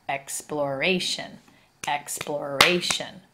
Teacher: But when we add the suffix shun and we add the letter A and take out the E, it changes to exploration, exploration. We start to accent that third syllable. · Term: accented syllable